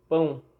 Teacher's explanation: A gente encontrou uma vogal mais uma semivogal, viu que ia do mais forte para o mais fraco e viu que tem marca de nasalidade. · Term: ditongo decrescente nasal